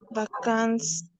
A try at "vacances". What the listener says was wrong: Vacances, ¿sí? Bien fuerte la B corta.